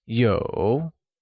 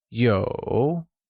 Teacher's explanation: is pronounced with a falling rising tone